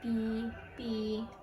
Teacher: articulation defined in the sixth the first is bilabial biollabio is when the consonants are obstructed by the upper lips and lower lips